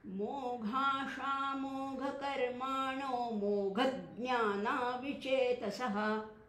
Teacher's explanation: ज्ञ हे मुळाक्षर आहे, पण ज्ञ हे संयुक्त व्यंजन मानलं जातं, कारण त्याच्यामध्ये द आहे, न आहे आणि य आहे, आणि म्हणून त्याच्या अलीकडच्या अक्षरावर आपण थोडा जोर घेतला, मोघज्ञान असं म्हटलं.